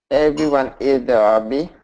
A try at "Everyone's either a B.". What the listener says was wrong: Mm-mm. You skip the S. And I know in Southeast Asia, skipping the S is common. Everyone's either a B.